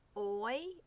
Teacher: a single vowel sound resembling a glide from one sound to another this is called a vowel diphthong